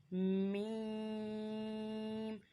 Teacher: मीम दोनों होंठों के खुश्क हिस्से से अदा होता है।